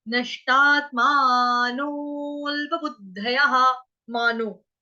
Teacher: अवग्रह का उच्चारण कुछ नहीं होगा, बस स्वर में हमने मिल जाना है